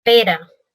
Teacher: el vibrante simple R en posición media